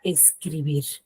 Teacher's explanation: Tiene la mayor fuerza de voz en la última sílaba, que es bir, pero no la tildo porque termina en R. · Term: aguda